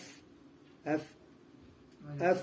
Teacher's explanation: وللفاء باطن الشفة السفلى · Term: الفاء